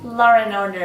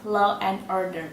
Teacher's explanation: So when we're speaking quite quickly, we might probably say law and order instead of law and order. Even though there is no R sound after the word law, many native speakers will naturally join the two sounds with the R sound. This is called intrusive R.